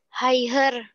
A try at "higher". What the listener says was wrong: Don't read the G.